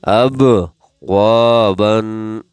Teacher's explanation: سے پہلے والے حرف پر یعنی واو پر زبر ہے لہٰذا واو کو 1 سیکنڈ یعنی 1 الف کے برابر کھینچیں گے